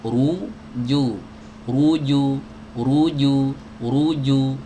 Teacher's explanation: yang tebal itu dhammahnya lebih bulat daripada dhammah yang tipis. Ru kalau tipis itu agak memipih sedikit. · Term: dhammah tebal